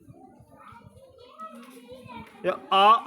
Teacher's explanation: आ को तालव्य से नहीं बल्कि कंठ से बोला जाता है